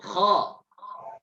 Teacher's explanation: Jadi suaranya huruf yang tebal itu vokalnya o. Tapi tidak boleh monyong mulutnya.